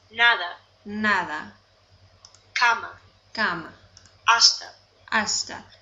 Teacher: Listen to these words and note how the vowel sounds are all short, crisp, and pure. Alright, so gives you a little bit of directions, and this automatically starts playing, and it says the Spanish A is pronounced like the A in the word father. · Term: the vowel letter A